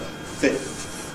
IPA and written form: fɪfθ (fifth)